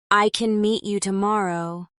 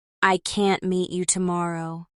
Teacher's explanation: In the first sentence, the can is softer. In the second, the can't is stronger.